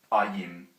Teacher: So we'll begin with the A. Now this is a low back vowel, so it's like A in father. So really it's supposed to be A.